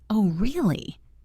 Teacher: The pitch must rise on really to convey genuine interest or surprise, not just a confirmation.